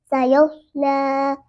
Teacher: صاد حرف مستعلیہ میں سے بھی ہے، اس لیے اس کو پر کر کے پڑھا جائے گا